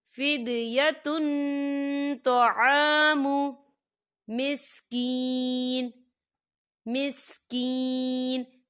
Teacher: دیکھیے فدیتن، تا کے اوپر تنوین ہے اور تنوین کے بعد تو آ رہا ہے، اور تو جو ہے اکفا کا ورڈ ہے، تو ہم یہاں اکفا کریں گے، تنوین کی آواز کو ناک میں چھپائیں گے